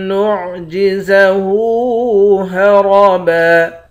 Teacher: آخر میں 2 زبر کی تنوین ہے، 2 زبر کی تنوین میں جب وقف کرتے ہیں تو ایک زبر بن جاتا ہے۔